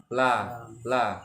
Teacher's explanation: keluarnya Sisi depan lidah semua yang melengkung menyentuh dengan gusi atas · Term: huruf la